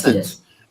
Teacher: Stress on the first syllable.